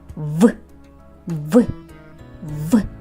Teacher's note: Верхні зуби зустрілися з нижньою губою. Відчуйте, як замкнулися губи з губою. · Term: звук В